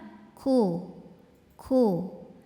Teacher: saat kafnya berharakat hidup maka angin dan suara keluar bareng-bareng kuu kuu Kuya monyong karena harakatnya domah kemudian masuk ke Fa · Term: huruf Kaf